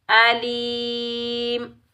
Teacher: वक्फ में मीम को साकिन अदा करेंगे। या मद्दा को एक अलिफ की मिकदार में खींच कर अदा करेंगे।